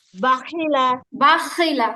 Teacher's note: গলার মধ্যে খসখস আওয়াজ হবে, এটা আবশ্যক